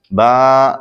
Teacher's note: बा दोनों होठों के तर्ज हिस्से से अदा होता है